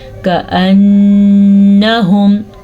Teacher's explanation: نون کے اوپر رک جاتے ہیں اور وہ آواز ناک میں چلی جاتی ہے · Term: غنہ